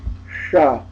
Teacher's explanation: tongue curls backwards and you say sha so you have sha just like in English and you have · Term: retroflex